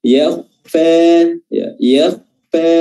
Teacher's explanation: huruf kha di sukun ini dipertahankan ketebalannya karena huruf kha pada dasarnya memang tebal, ya, baik dia kasrah, fathah, dhamma maupun sukun.